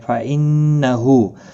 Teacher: ہا کے اوپر الٹا پیش ہے، ایک الف کی مقدار کے برابر کھینچ کر پڑھیں گے